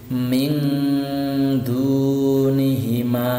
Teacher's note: Jadi suara nun sukunnya itu menjadi eng. Contoh ini ada nun sukun bertemu dengan dal yang merupakan huruf ikhfa. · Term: ikhfa hakiki